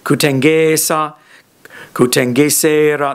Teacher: You can see that the length is transferring as I add suffixes and that it's on the penultimate syllable. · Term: penultimate lengthening